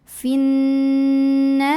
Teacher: ha mad tabi'i karena ada alif sebelumnya fathah. Maka cara membunyikannya adalah dipanjangkan haknya 2 harokat.